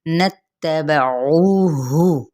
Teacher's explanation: नत्तबऊहु, अब ऊ पे वाव मद्दा का रूल हो रहा है, यानी एक अलिफ या दो हरकत के बराबर, क्योंकि वाव साकिन से पहले पेश आ रहा है।